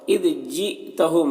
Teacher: یہاں پر حمزہ ساکنہ جھٹکا لگے گا